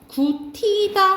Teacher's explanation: 먼저 구티다 하면서 축약 먼저 일어나거든요. 그런 다음에 구개음화가 일어나요. 그래서 구치다 이렇게 발음 나고 해도지.